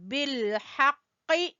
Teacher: قاف بھی زبان کی جڑ سے ادا ہوگا، اور یہ قاف بھی پر پڑے جانے والا حروف ہے